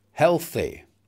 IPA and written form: ˈhelθ.i (healthy)